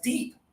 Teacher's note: your tongue is high. There's just a little bit of air.